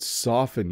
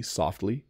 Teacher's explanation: The T flaps a bit, right? It becomes a D, softly. But soften, you don't hear it at all.